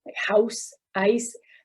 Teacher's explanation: the ow and i sound before these voiceless sounds such as house ice the tongue is raised actually and that and it's actually called canadian raising because it's very